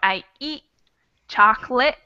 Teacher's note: So those last T's might get cut off in the throat.